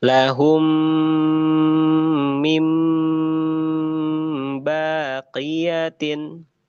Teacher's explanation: Ketika kita menemukan dalam Al-Qur'an mim sukun bertemu dengan mim maka bacaannya harus ditahan dua sampai 3 harakat ya. Dua sampai 3 harakat. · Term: idgham mimi